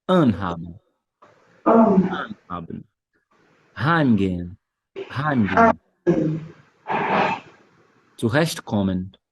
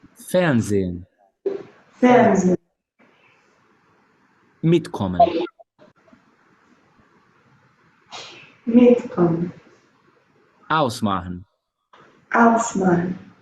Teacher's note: na hora de pronunciar o verbo no infinitivo, quando tá tudo junto, a sílaba tônica recai em cima do prefixo